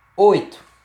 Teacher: Uma sílaba aí composta apenas de vogal e semivogal, sem presença de consoante